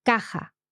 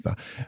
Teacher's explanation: They're talking about the stress, the pronounced stress on the second last syllable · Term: llanas